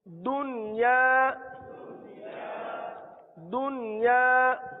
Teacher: यहां एक ही कलमे में नून साकिन के बाद या मौजूद है, तो यहां पर इदगाम नहीं होगा बल्कि इजहार मुतलक होगा